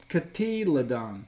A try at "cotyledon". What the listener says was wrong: No, cotyledine. No, but you don't pronounce the O. See the phonetic spelling? it's a long E without an O sound. So, cotyledine.